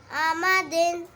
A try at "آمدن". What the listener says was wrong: شاباش.